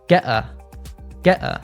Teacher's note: we have another glottal T in get, and it links to a.